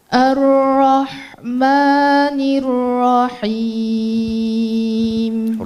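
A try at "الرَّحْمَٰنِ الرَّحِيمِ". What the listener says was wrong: Huruf ra-nya kurang tebal, bukan ar, nir, bukan nir. Mungkin banyak yang mikir ra, nir, rahim itu tipis, mulainya tipis karena sebelumnya ada kasrah, tapi ini salah. Ra-nya langsung tebal, nir, coba ulang lagi.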